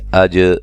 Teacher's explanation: جیم پہ قلقلہ کریں گے